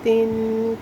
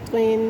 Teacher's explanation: تا اور طا میں فرق رکھا کریں، تا باریک پڑھی جائے گی ہمیشہ، اور طا پر پڑھی جائے گی